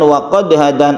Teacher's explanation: ada qalqalah, karena di tengah bukan di akhir atau diwaqafkan, maka disebut qalqalah sughra. Hadan ini mat arid lisukun, karena ada mat tabi'i.